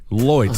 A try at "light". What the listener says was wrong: But the thing is that it's not as ridiculous as loy. It's light.